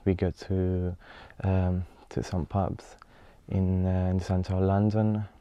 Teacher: very clear but again rather monotonous intonation perhaps he needs to sound more lively